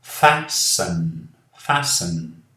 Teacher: Aqui não falamos o T.